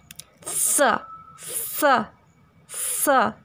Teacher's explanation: जीभ दंत मूल को छूती है। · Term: दंत्य स